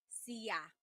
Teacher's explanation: There are some regions in the Philippines where sha is pronounced sia.